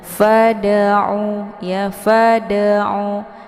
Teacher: dalnya dipantulkan dengan pantulan ringan. Fada'u ya, fada'u, sekedar bunyi de ya. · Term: qalqalah sughra